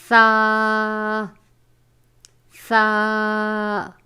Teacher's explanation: زبان کا سرا اور اوپر کے دانتوں کے اندرونی کنارے سے ادا ہوتا ہے